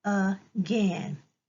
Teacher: at the beginning of the word there's an a but we hear the UH sound